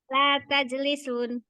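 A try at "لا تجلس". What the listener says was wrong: Tidak dikasih harokat. Disukun akhirnya. La tajlis.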